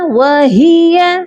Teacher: ہا جو ہے سینے والے حلق سے اس کی ادائیگی ہوگی